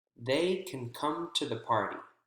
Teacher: can is reduced and we don't hear can't